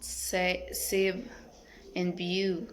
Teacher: Characteristic labiodentals, fricative, and voiced.